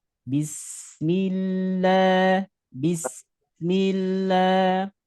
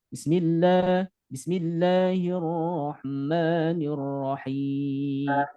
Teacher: Tapi bis kemudian dialirkan suaranya. Jangan sampai mantul, jangan sampai tertahan, tapi dialirkan.